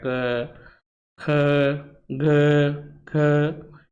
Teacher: जीवा का जो अग्र भाग होता है और मध्य भाग होता है वह कंठ और तालो को स्पर्श करता है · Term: स्पर्श वर्ण